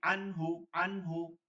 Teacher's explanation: পড়তে হবে নুন সাকিন বা তানবিনের বামে ইজারের কোন হরফ আসলে নুন সাকিন বা তানবিনকে গুনা ছাড়া স্পষ্ট করে পড়তে হয় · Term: ইজহারের